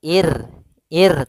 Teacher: ro yang sukun didahului dengan kasrah maka ini kita namakan dengan ro tarqi ro yang tipis dalam pelafalannya